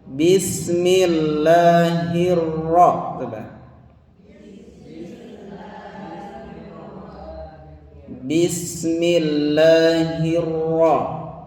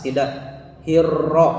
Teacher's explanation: Jadi ro bertasdid itu pengucapannya tidak terlalu jelas R-nya. Tapi tidak terlalu cadel juga ya, pertengahan.